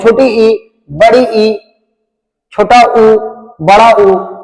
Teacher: बहुत कम मुंह खुला होता है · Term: संवृत